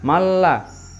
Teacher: bilagunnah tanpa dengung jadi bacanya tidak boleh dengung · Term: Idgham bilagunnah